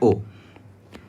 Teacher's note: जो अ है यह कंठ वर्ण होता है और जो उ होता है यह ओष्ठ वर्ण होता है। तो कंठ और ओष्ठ मिलकर के यह कंठोष्ठ बना लेता है। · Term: कंठोष्ठ वर्ण